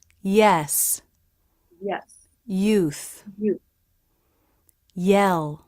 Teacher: the tongue tip is down while the middle of the tongue presses forward against the roof of the mouth releasing into the e as in bed vowel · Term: Y sound